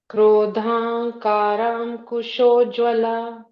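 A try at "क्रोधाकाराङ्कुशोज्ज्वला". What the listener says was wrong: After Krodha, there is no ing sound.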